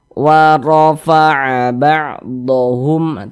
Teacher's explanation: Maka huruf ra-nya dibaca tebal, dibaca tafkhim, sehingga pangkalisan kita itu ketika mengucapkan itu naik terangkat ke atas.